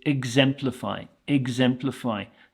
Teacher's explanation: The sound at the start is more of an ig, i g sound than an e x.